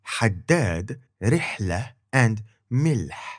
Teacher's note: Then we had h, as in haddad, rihla, and milh. A sound made by constricting your throat below the base of your tongue at your epiglottis, which is what you will do naturally when you drink something cold.